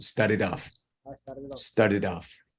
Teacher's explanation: So that T sounds like a D.